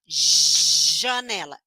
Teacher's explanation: ponto articulatório, língua encostando no céu da boca, fazendo o biquinho, fricativo que prolonga o som e sonoro que vibra o pescoço.